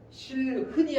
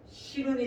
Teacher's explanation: 자, 이게 히읗 탈락이죠. 히읗은 모음을 만나면 탈락합니다